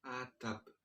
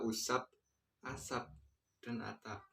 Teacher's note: Kata ini menggunakan akhiran B, akan tetapi dilafalkan sebagaimana bunyi B itu dilafalkan dengan huruf P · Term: netralisasi